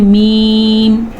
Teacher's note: دونوں ہونٹوں سے میم ادا ہو رہا ہے، اس لیے اس کو، اور دونوں ہونٹوں کو کہتے ہیں شفتین.